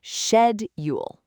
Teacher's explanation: Shed. That first syllable is so important. It's shed, not sked.